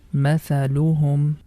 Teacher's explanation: We have to make short sound on each syllable because there is no long vowel